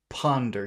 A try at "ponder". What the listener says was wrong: Make the O bigger.